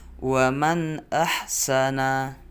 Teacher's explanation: sukun atau tanwin yang demikian itu arus terang jelas dan pendek bunyi suaranya tetap jelas tidak samar dan tidak mendengung